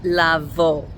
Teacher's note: Now, one really common verb that's a little bit different is lavo, which means to come. And it has an o sound instead of an ooh sound. And that is supposedly because of the alf that comes right after the vav.